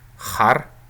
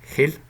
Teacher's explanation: har with a uvular h, and for example, hil, which means language, with a velar one